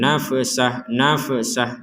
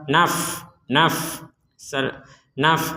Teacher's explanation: di sini ada Fa sukun Maka jangan dipantulkan nafsah nafsah jadi yang tidak dipantulkan ya yang tidak boleh dipantulkan